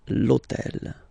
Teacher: on purpose this hôtel, okay, because it starts with H, but remember that in French we don't pronounce H, okay, so basically the first sound of the word is the vowel O